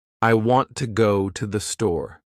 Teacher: The words want, go, and store are strong. The others are weak. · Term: sentence stress